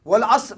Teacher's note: Sad kena tebal. Kemudian ra kena tebal pasal dia mati sebelum baris atas. Setiap kali ra kalau dia kewakafkan dia mati baris atas tebal.